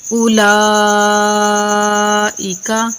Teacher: لام کے اوپر جو مد ہے یہ مد متصل واجب ہے، اس کو 5 الف کے برابر کھینچ کر پڑھتے ہیں۔ ایک مٹھی کو کھولنے یا بند کرنے میں جتنا ٹائم لگتا ہے وہی مقدار 1 الف کی ہوتی ہے، تو ادھر ہم 5 الف کے برابر اس مد کو کھینچ کر پڑھیں گے۔